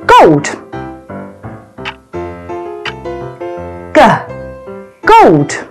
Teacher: this is a voiced sound so your vocal chords will vibrate when making this sound